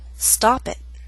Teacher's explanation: that's a true T with not much puff of air and a glottal stop